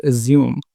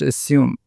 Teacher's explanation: some people pronounce this word assume but according to the dictionary it should be pronounced assume with the sa sound as opposed to the zah sound